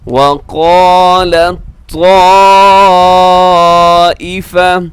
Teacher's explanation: تا اور طا، یہاں دونوں کا ادغام ہو رہا ہے۔ اس کو کہا جاتا ہے ادغام متجانسین۔